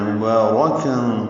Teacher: مبارکن میں با کو 2 حرکات لمبا کریں گے، را کو جلدی پڑھیں گے لیکن پر پڑھنا ہے